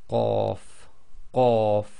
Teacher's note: So when you say qaf, the back of your tongue effectively touch the very back of the soft palate and blocks the air before you release the sound